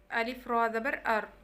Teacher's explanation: रा जो है इसमें जो सामने वाले दांत हैं उनका जो ऊपर मसूड़े हैं उनके साथ ज़ुबान टच करती है तो रा अदा होता है।